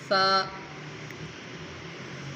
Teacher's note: جب سا پڑھنا ہے تو سیٹی کی آواز نہیں آنی چاہیے۔ اس میں زبان اگلے سامنے والے دانت ہے اس کی نیچے جڑوں کے ساتھ زبان کو لگے تو پھر سا نکلے گا۔